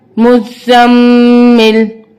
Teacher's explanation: मुज़्ज़म, मीम ज़ेर मी, मुज़्ज़म्मी, लाम पेश लू, मुज़्ज़म्मिलु, वक्फन मुज़्ज़म्मिल, वक्फ की सूरत में पेश ओमिट हो जाएगी